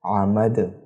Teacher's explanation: قلقلہ کرنے کی وجہ یہ ہے، قلقلہ کے 5 حروف طا قاف با جیم دال، دال یہاں پر موجود ہے اور دال پر وقف کے دوران جزم بھی آ رہا ہے، اس وجہ سے اسے قلقلہ کریں گے